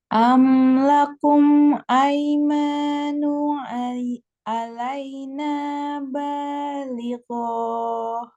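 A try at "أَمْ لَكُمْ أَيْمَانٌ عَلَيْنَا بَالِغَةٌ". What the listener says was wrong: Am lakum aimanun alaina balighah. Gohnya pendek. Balighah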